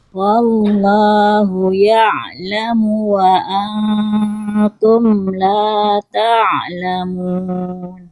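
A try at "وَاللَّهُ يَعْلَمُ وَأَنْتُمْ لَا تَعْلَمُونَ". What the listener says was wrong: Masya Allah, tabarakallah, alhamdulillah.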